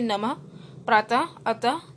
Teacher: इसका उच्चारण ह के समान होता है, मतलब इनको बोलते समय ह की आवाज निकलती है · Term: विसर्ग